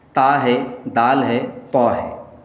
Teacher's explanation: इन तीनों का मखरज जुबान की नोक और सामने के ऊपर के दांतों की जड़ है